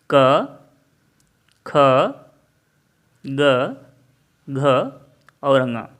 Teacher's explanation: य सभी वर्ण कंठ से बोले जाते हैं